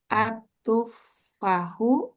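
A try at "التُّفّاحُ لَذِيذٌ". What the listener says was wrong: Pak-nya panjang.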